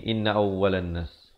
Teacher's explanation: Dengungkan dua harakat. Na awlan didengungkan di sini dua harakat. Wajibul gunnah.